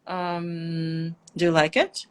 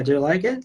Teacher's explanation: a general question in American, in the most American dialects, you're gonna go down and up. Like, do you like it?